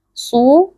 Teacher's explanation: huruf shad, huruf tebal dibaca dengan mengangkat pangkal lidah